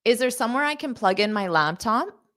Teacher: at the end my intonation slightly Rises because this is a yes or no question if you're asking a yes or no question then your intonation